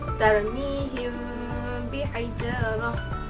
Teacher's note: huruf mim yang pertama itu perlu disembunyikan secara samar dan disertai dengan dengung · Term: ikhfa syafawi